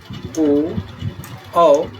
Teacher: ओ और औ के उच्चारण के लिए कंठ और ओष्ठ इन दोनों का योग होता है, तभी इनका उच्चारण होता है।